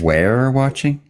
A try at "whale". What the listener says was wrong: A whale. I couldn't tell because you forgot to pronounce the H. It's whale. I can't believe that Canadians don't pronounce it whale.